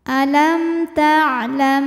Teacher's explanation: maka mim sukun dibaca jelas alam taam ada izhar syafawi karena mim sukun menghadapi huruf selain mim dan ba yaitu huruf hamzah ya maka mim sukun dibunyikan dengan jelas